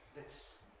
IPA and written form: ðɪs (this)